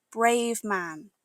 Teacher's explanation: The V from brave connects smoothly to the M in man. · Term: link the sounds together